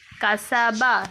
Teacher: سین کی باریک آواز ہوتی ہے، سیٹی کی طرح، صوت کی طرح نہیں پڑھا جائے گا.